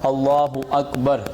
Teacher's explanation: تو سب سے پہلے اللہ اکبر کہیں گے جب نماز پڑھنے کے لیے، تو اللہ اکبر، اللہ کا جو لام ہے اس کو پر کرنا ہے، جیسے کہ کل بھی بتایا کہ اللہ کے لام سے پہلے حرف کے اوپر زبر یا پیش ہو تو پر پڑھیں گے اللہ اکبر، ٹھیک ہے۔ اکبر، را کو بھی پر کریں گے